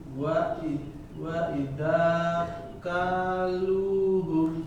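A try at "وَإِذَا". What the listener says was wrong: Pakai zal. Wa idza. Ini panjang, ini panjang, ini enggak, ini enggak, ini panjang, ini enggak gitu ya.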